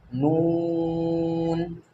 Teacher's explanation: उसके बाद में नून, तो अब नून, नून इस तरह अदा होगा, ज़ुबान की जो नोक है, ज़ुबान की नोक का पीछे का हिस्सा जब सामने के दांतों के मसूड़ों में लगे तो नून अदा होता है, इस तरह से नून।